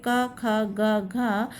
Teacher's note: बाकी जो ये रह गए क ख ग घ इनका उच्चारण स्थान कंठ है।